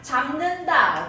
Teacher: 비읍이 미음으로 바뀌었습니다. 비음으로 바뀌었으니까 비음화 현상.